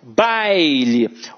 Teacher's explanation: em baile, baile, o A é a vogal e o I é a semivogal